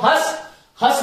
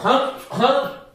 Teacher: अनुस्वार का उच्चारण स्थल जो है वो केवल नासिका है, अनुस्वार नासिका से बोला जाता है। जैसे मैं बोलता हूं हस, हस बोलूंगा तो केवल मुख से होगा, और हं हं जब तक नासिका से नहीं होगा, जब तक हंग से नहीं बोल सकता, ये ध्यान रखिएगा।